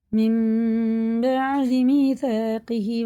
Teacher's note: نون کی آواز کو غنہ کر کے پڑھیں گے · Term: اقلاب کا قاعدہ